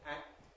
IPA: æk̚t-